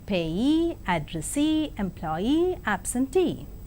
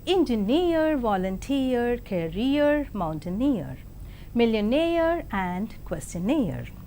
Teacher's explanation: the words ending with suffix ee, eer and air are stressed on the the syllable itself